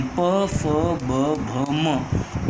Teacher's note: ओष्ठ माने ओठ। ओठों की सहायता से उच्चार किए जाने वाले स्वर है उ और दीर्घ उ तथा प वर्गीय व्यंजन